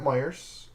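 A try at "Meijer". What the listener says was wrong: Nope. There's no S. There's no S. it's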